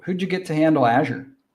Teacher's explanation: we have two T sounds in a row here. So one of them drops out and then we just push those two words together.